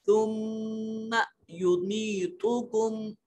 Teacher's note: میم مشدد ہے، آواز کو ناک میں لے جائیں